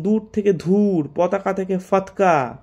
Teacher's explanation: অল্পপ্রাণ ধ্বনিকে মহাপ্রাণ উচ্চারণের প্রবণতা বিপুল পরিমাণে দেখা যায়